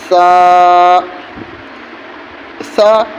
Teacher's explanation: سا میں زبان ہلکا سا باہر آئے گا اور کنارے پہ، دانتوں کے کنارے پہ سا میں زبان لگے گی۔